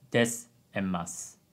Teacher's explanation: We write desu and masu, but we typically don't pronounce the last u